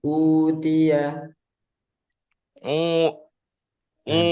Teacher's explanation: U ini masuk hidung sambil dipencet U gitu ya. Jangan ada hidungnya. Jangan ada masuk ke hidung.